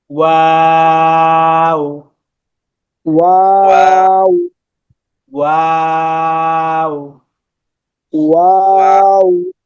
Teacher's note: শুধু দুই ঠোঁটটা গোল করে সামান্য ফাঁকা রেখে এইভাবে, দুই ঠোঁট গোল রেখে সামনে সামান্য ফাঁকা রেখে তিন আলিফ টান।